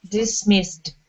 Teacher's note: Okay, so all of those S's are unvoiced S's.